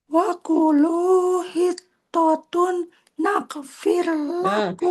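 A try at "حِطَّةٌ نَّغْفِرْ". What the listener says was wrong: Hittotun ada dengung dulu. Hittotun karena dhamma tanwin ketemu nun.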